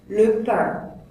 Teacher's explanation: L'air passe par le nez pour dire pain. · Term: voyelles nasales